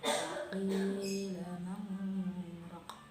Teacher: terdapat bacaan saktah, yaitu berhenti sejenak sebelum melanjutkan bacaan selanjutnya